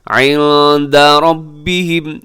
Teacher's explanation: را کے اوپر حرکت ہے تو را کو آپ نے پر پڑھنا ہے